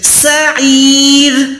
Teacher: سین کے ٹائم وسل ساؤنڈ یعنی سیٹی کی آواز دے ، یہ والی ساؤنڈ دے، سعیر، را زیر ہے لیکن را